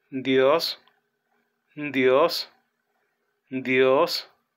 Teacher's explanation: puede tener dos sonidos la primera como una combinación de nd y la segunda propiamente el sonido que ya conocemos en español